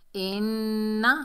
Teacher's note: इन्ना हमज़ा के नीचे ज़ेर आग नून मुशद्दद है, हमज़ा को नून से मिलाएंगे। नून मुशद्दद में एक अलिफ की मिकदार गुन्ना करेंगे।